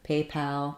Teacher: in the word paypal we have a little stress on both syllables but the main stress is on pay secondary stress on pal